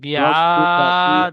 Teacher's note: বি টান হবে না, রব্বু বিয়াদ। আইনটি টান হবে